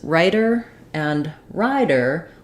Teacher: in the middle of words when we have a t or a D um and it's followed by an unstressed syllable we use what's called a flap so I'm not saying T like t or d like d · so I'm not saying T like t or d like d I'm doing a a voiced sound where my tongue goes up to the T and D Spot but it doesn't build up any pressure